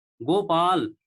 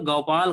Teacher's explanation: जहां ओ की मात्रा होनी चाहिए, हमें ओ की मात्रा का उच्चारण करना चाहिए, वहां पे हम औ की मात्रा का उच्चारण करते हैं